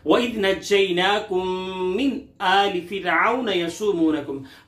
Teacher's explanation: वइज़ की दाल को बारीक, नज्जैनाकुम की जीन पर थोड़ा सा सख्ती करके